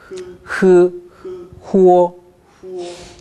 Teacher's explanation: 입술에서 후아 나면 안 됩니다. 흐는 목구멍에서 나야 됩니다. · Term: 흐 발음